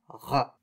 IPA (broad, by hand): ʁ